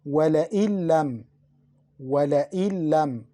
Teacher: We mixed Noon into Lam. We didn't pronounce Noon. We pronounced the Lam twice. وَلَئِن لَمْ without Ghunna also.